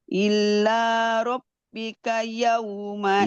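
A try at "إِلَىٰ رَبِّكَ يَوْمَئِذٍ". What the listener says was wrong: idzin. Bukan illa.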